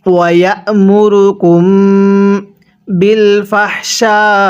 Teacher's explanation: গুন্নাহ করবেন, কারণ মিম সাকিনের পরে বা থাকলে মিম সাকিনটিকে গুন্নাহ করে পড়তে হয়।